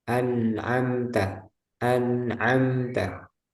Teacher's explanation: sukun atau tanwin dibaca dengan jelas ketika bertemu dengan huruf tenggorokan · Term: izhar halqi